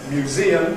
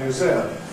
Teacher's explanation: ‘museum’ [mjuˈziːəm] can become [mjuˈzɪəm]